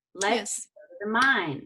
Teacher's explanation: the words to stress in the rhythm were go and mine